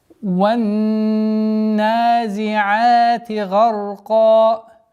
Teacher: Ван с огласовки фатха уходим на удвоенный нун. Удержание назализация в размере двух огласовок, после которой удлинение в размере двух огласовок, естественно, удлинение фатха.